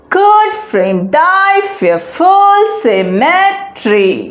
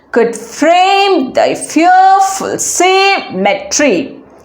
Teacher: this line has a non-stressed syllable followed by a stress syllable pattern which means it is an iamb